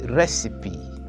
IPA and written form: ˈrɛsɪpi (Recipe)